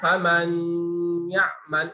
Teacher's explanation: nunnya idhar, tetapi ada plusnya, tambah gunnah dia